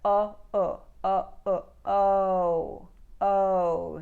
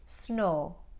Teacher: movement in the sound what happens in an Indian accent is they only pronounce the first part and they Lop off the second making it just a pure vowel